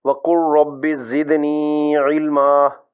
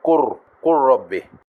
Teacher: ادغام متقاربین کی دوسری مثال سورہ طٰہٰ کی آیت 114 سے ہے: وَقُلْ رَبِّ زِدْنِی عِلْمًا۔ اس میں لام اور را مخرج اور صفات دونوں میں قریب ہیں، اس لیے لام مجزوم کا را مشدد میں ادغام ہو جائے گا اور پڑھیں گے قُر رَبِّ۔